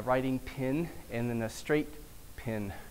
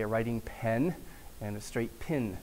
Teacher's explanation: So pen and pen are usually different vowels, but I grew up in Texas where it was always pin. So the e before a nasal consonant like n or m in short words was an I. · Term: pen merger